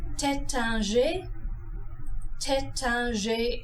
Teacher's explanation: The IN is another nasalized vowel. Say the syllable like the word tan and then nasalize the N.